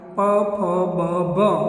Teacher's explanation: તો એ છે ઓષ્ઠ દ્વારા. ઓષ્ઠ સ્થાની કહેવાય. ઓષ્ઠ દ્વારા, હોઠ દ્વારા.